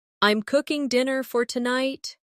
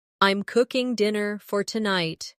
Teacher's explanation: The stress is on cooking and tonight.